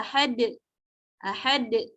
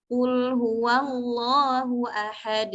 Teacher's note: Enggak boleh ada tambahan hamzah Jadi suaranya ahad ahad Nah kalau Ahad itu seperti ada hamzahnya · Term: Qalqalah yang kubra